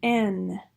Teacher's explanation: Again, an alveolar, voiced alveolar nasal. · velopharyngeal port is open for that nasal resonance to differentiate that N from the D.